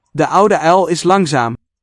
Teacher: Here we see vocalization of the L coda, which Dutch shares with its neighbor French.